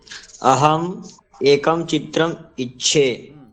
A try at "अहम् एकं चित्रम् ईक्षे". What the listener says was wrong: दीर्घकाल पर्यन्तं उच्चारणं भवेत्। ईक्षे, ईक्षे,